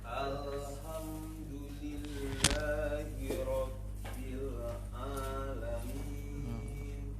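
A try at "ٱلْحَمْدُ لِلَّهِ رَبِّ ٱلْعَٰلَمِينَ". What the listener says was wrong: Di awal-awal nak mantul alhamdulillah. Ya, lam kedua mantul tadi.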